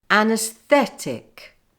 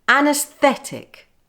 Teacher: speed it up with the stress on Fe